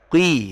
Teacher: Ada orang sekarang kadang bacanya dengan ngugemi, ya, ngugemi dengan dia berdalih sifat isti'la, kadang dibaca kui. Jadi bukan pangkal lidahnya yang berpengaruh, tapi bibirnya yang dirubah